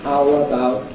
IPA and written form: ˈhaʊ əbaʊt (How about)